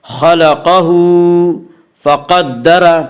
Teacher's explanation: خلقہ، ہا کے اوپر الٹا پیش ہے، الٹا پیش قائم مقام ہے، وا مدہ کے، اس لیے الٹا پیش کو ایک الف کے برابر کھینچ کر پڑھیں گے۔ خلقہ فقدر، قاف کو پر پڑھیں گے، قاف حروف مستعلیہ میں سے ہے۔ حروف مستعلیہ 7 ہیں جن کا مجموعہ خصہ ضغط نقض ہے، جو ہمیشہ ہر حال میں پر پڑے جاتے ہیں۔